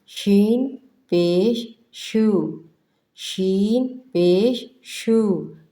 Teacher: شین جو ہے منہ بھر کے ادا کیا جاتا ہے